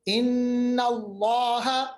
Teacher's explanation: लामी जलाला मोटा क्योंकि नून पे जबर